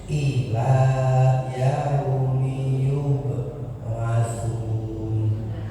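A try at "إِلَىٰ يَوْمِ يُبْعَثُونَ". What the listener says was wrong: Sekali lagi nanya dibaca, masih dibaca. Ila yaumi yub'atsuna. Coba huruf ain yub'a. Jadi dihilangin al-nya, jangan yub'a, tapi yub'a. qalqalah ya, itu ketika dia sukun kemudian berada di tengah-tengah kalimat, maka pantulannya kecil saja ya, dan mirip seperti bunyi fathahnya, mirip seperti bunyi ketika dia fathah.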